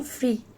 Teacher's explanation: E is in free. It is closed front unrounded vowel.